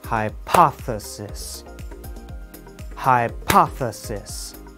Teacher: English speakers put stress on the second part of the word · we do not stress the beginning or the end of the word